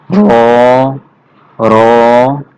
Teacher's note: জিহ্বার আগার পিঠ তার বরাবর উপরে তালুর সঙ্গে লাগাইয়া উচ্চারিত হবে মোটা করে